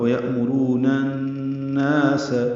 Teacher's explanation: نون کو الناس کی نون سے ملا دیں گے، ادغام شمسی ہوگا اور غنہ بھی ہوگا